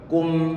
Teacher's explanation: yang dipanjangkan mestinya adalah gunnahnya, bukan suara kunya